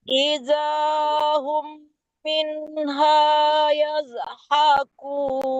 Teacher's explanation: Idahum ya, bukan izhum, tidak mati zalnya.